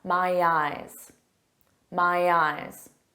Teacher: Notice that y sound helps link to the vowel.